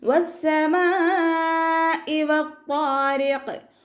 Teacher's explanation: മീമിൻ്റെ കൂടെ മദ് വന്നു, മദ്ദക്ഷരത്തിന് ശേഷം അതേ വേർഡിൽ തന്നെ ഹംസയും വന്നു. മദ് വാജിബ് മുത്തസിൽ 4-5 കൗണ്ട് നിർബന്ധമായിട്ടും നീട്ടിക്കൊടുക്കുക. · സീനിന് ശബ്ദ വന്നിട്ടുണ്ട്, 2 ഹർഫുകൾ ഉച്ചരിക്കുന്ന കനം കൊടുക്കുക.